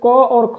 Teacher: तो दोस्तों कंठ ध्वनियां आपका ऑप्शन नंबर ए क और ख जो है दोस्तों ये आपका कंठ और मतलब कि कंठ से इनका उच्चारण होता है, तो ये कंठ ध्वनियां कही जाती हैं क और ख को।